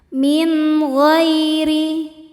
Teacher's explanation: Min ada hukum izhar halqi karena ada nun sukun bertemu dengan huruf halqi atau huruf tenggorokan yaitu gain. Maka cara bacanya nun sukun dibaca dengan jelas. Min ghairi ghai ada harfulin atau huruf lin sebab ada ya sukun sebelumnya baris fathah.